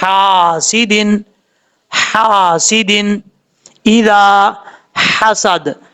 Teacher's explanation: حلق کا درمیان کا حصہ جو ہے وہاں سے ہا ادا ہوتا ہے۔ اب اس کو اگر پڑھتے ہیں تو پڑھتے ہوئے جب تک یہ آواز نہیں نکلے گی، یہ آواز، اس وقت تک یہ ہا پڑھا ہی نہیں جائے گا اپنے مخرج سے، یہ بات یاد رکھیے گا۔